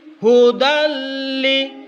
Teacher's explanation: Hudan, tulisannya hudan, tetapi karena menurut tajwid itu harus dimasukkan yang dengun ke huruf sesudahnya. Tanwin masuk ke lam, hudalli. Jadi masuk di hudalli. Kemudian dibaca pendek. Tidak seperti idgham bi gunnah harus sudah ketukan. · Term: idgham bila gunnah